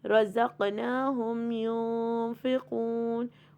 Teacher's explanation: قلقلہ کا مطلب ہوتا ہے ایکو، ٹھیک ہے. قوف کے اوپر قلقلہ ہوگا